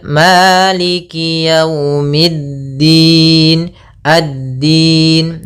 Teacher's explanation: alif lam syamsiah yaitu alif lam yang ditulis tapi tidak dibaca langsung ke huruf Dal